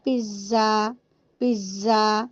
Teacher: جب آپ زا کو پڑھو گے نا تو دیکھیں ہم نارملی کہتے ہیں نا پیزا، پیزا، تو دیکھیں لاسٹ میں کہتے ہیں زا، یہ زا میں دیکھیں سیٹی آ رہی ہے